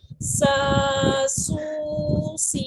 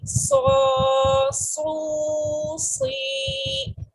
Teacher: سین میں صرف وسلنگ اور یہ لائٹ ریڈ ہوتا ہے، باریک پڑھا جاتا ہے، جبکہ صاد میں وسلنگ کے ساتھ ہی بولڈ بھی ہوتا ہے